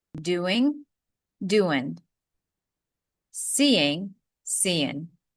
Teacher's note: If you want to be even more casual, you can eliminate the G at the end of doing.